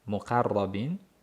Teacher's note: Qof a bo'lib ingichka emas o qilib yug'on qilamiz.